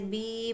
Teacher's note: या मद्दा को भी हमको एक अलिफ के बराबर खींच कर पढ़ना है